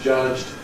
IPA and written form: ʤʌʤd (judged)